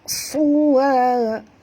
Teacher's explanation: Huruf suad tebal, ya. Jangan baca suwa jadi huruf sin, jadi baca huruf suad.